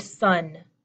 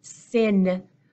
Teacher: there's some tension in my lips my lips are pulled back